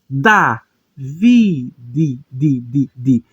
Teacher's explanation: Esse Dalet sem Dagesh, ele tem um som de um DH.